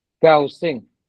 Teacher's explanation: 高兴 has to be high, not low.